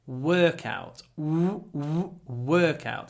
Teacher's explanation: Remember, the stress is on the first syllable. Workout. That means we get a longer w.